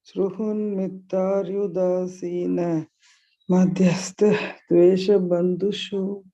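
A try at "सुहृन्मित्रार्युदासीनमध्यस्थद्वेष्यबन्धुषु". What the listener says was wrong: Ma'am, you just don't break here. You hold your breath and then Suhrin mitrar yudasina madhyasthadveshya bandhushu in one breath. Madhyasthadveshya. That is the ditvam here. Madhyasthadveshya bandhushu.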